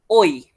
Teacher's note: Daripada vokal depan rendah ke vokal belakang tinggi, au. Dan juga daripada vokal belakang separuh tinggi ke vokal depan tinggi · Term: diftong